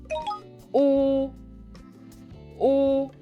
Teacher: About the main vowel, U. Lips rounded and slightly protruded, like whistling. Your tongue high and pulled back slightly.